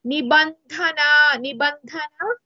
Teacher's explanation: in this particular word ధ is మహాప్రాణ